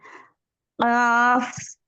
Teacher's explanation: काफ, काफ और काफ जुबान की जड़, उसके मुकाबिल तालु ऊपर के उसके मुकाबिल ऊपर के तालु पे, नर्म तालु पे लगने से काफ और कैफ अदा होता है